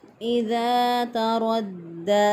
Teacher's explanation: دال کے اوپر شد ہے، مضبوطی اور قوت کے ساتھ پڑھا، اس کے بعد کھڑی زبر بھی ہے، ایک الف کے برابر لمبا کر کے پڑھا، تو ہم نے اس کو ادا کیا۔